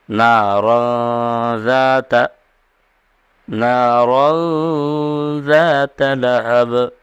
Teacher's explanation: یہاں غنہ ہوگا، ناک میں آواز کو لے جائیں گے۔